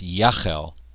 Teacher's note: You can tell because of, first of all, the prefix vowel is a qamets, and we see the E-class vowel. It actually shortens from a tsere to a segol because the accent has shifted because of the vav consecutive. So it's Yachel.